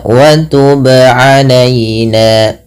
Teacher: Yang benar adalah dia memantulkannya tanpa berhenti, tanpa menambahkan hamzah ya. Contohnya wa tub alaina, sesuaikan dengan makhraj dan sifat dari huruf ba. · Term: qalqalah